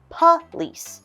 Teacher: You'll notice there is an O, but we are going to change that to a UH sound.